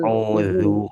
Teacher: Jangan zubi. Ujung lidah keluar dikit, Bu.